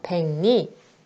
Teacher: 백리는 이 두 번째 경우에 해당하죠. 받침 기역 뒤에 오는 리을은 니은으로 발음한대. 그래서 먼저 백리, 리을의 비음화가 일어나요.